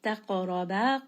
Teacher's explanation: So, make sure that you give it a bit of bounce, that you make it heavy. And then ra here is also going to be heavy because it has a fatha. Ba is going to be a two count madd. · qaf is going to be heavy. It also has qalaqala. So, make sure that you give it a bit of bounce, that you make it heavy.